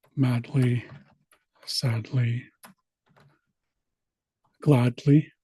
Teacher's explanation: you kind of push the D and the L together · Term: barred lambda